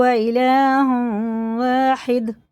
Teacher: اور دال میں قلقلہ ہے